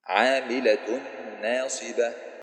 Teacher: the Tanween Dhamma gets merged into the Noon, producing a prolonged nasal sound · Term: Idgham with Ghunna